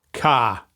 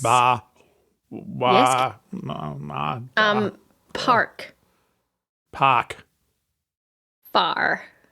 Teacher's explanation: One of the key things to speaking like an Australian is anything with an R sound, like a hard R. We don't say R's, we say ah, like a pirate.